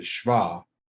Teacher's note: So there's really no vowel sound between the SH sound, sh, and the V sound, shva, right? It's a diphthong.